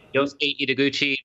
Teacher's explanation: Yosuke Ideguchi, the emphasis is on the first syllable.